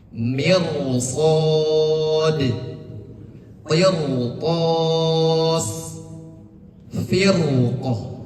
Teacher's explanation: Kemudian ini huruf qof ada juga huruf qof. Jadi cara membaca r-nya adalah mufakhamah tebal. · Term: mufakhomah